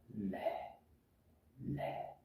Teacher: जिस ध्वनि का उच्चारण करते समय हवा जीभ के दोनों बगलों भाग से बाहर निकलती है, ये है पार्श्विक।